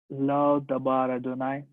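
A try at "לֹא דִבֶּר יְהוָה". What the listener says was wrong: It's true, it's dabar, but the pronunciation should be not dabar of hirek. Yes, diber.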